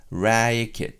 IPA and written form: ræikɪt (racket)